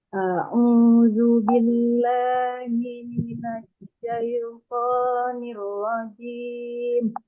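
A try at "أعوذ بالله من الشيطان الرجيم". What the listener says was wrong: Ya, ainnya ditekan ke bawah, Bu. A'u, a'udzu, a'udzu. Au kan dia monyong tuh Bu, karena berbaris depan. Au, kemudian zu juga monyong. Jadi kesalahan orang karena dia dua monyong, dia langsung monyong. Jadi a'udzu, a'udzu. Nah, padahal zu itu dia untuk membedakannya dia ditarik dulu. A'udzu billah.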